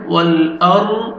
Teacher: را ساکن ہے، اس سے پہلے زبر ہے، را کو آپ نے پر کرنا ہے